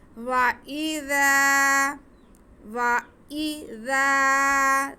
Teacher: ذال بہت نرمی سے ادا ہوگا، اس میں سیٹی کی آواز بالکل بھی نہیں آئے گی